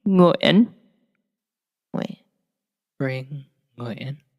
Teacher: the way that your tongue is placed in the back of your mouth, bring, when you say that last syllable, is the beginning of how you would say our last name